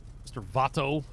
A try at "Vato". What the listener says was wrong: It's Bato, by the way. Like pronounce it with a B. Yeah, pronounce it with like a B. V in Spanish is like a B.